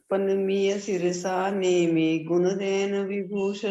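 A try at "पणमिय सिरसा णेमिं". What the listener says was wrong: नेमी नहीं, नेमी नहीं, नेमिम ऊपर बिंदु भी है।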